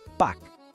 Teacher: A gente não fala esse S no final, ok? Ele é mudo. Então a pronúncia é só Pâques.